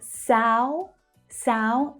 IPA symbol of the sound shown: aʊ